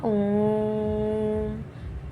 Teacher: और फिर हमारा लास्ट है प्लुत स्वर। यहां पे तीन या फिर तीन से ज्यादा मात्रा का समय लगता है।